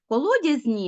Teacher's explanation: звук нь м'який тому що і завжди пом'якшує попередні приголосні але він не може бути сам м'який а поділився своєю м'якістю